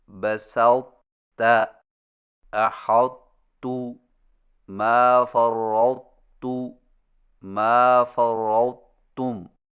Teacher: تا کو موٹا اور بغیر جھٹکا کے تا میں داخل کر کے اس طرح پڑھیں کہ تا کے موٹا پن کو ظاہر کرنے کے فوراً بعد تا بریک ادا کریں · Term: ادغام ناقص